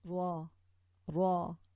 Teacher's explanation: We say this, pressing the tip of the tongue against the hard palate produces ra, and these are, you would say this by touching the tip of the tongue and touching the inside of the upper 2 incisors, the gums of the 2 upper incisors.